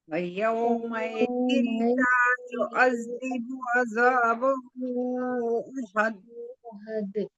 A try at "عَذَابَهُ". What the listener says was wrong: زا کا ساؤنڈ نہیں نکالے، زال ہے، جیسے سا نکالتے ہیں سا، ویسے ہی زال نکالنا ہے. عذابہ عذابہ عذابہ آواز نہیں آنی چاہیے.